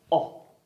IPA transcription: ɒ